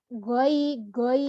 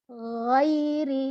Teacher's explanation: Nah, pengucapan huruf gha, huruf gha ini juga termasuk huruf halqiyah yang berasal dari tenggorokan, yang mana dia ini dari tenggorokan yang paling atas. Jangan nyerempet ke kha.